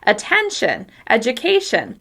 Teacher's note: The syllable before the shun is stressed.